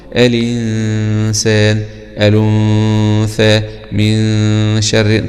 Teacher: يعني غنة الإخفاء لو هيجي بعدها حرف استفال زي النون، زي حرف السين مثلا أو حرف الثاء أو الشين، هنا الغنة تكون مرققة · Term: غنة مرققة